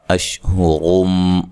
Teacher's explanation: را کو موٹا ادا کرنا ہے، ہا کو اس کے مخرج سے نکالنا ہے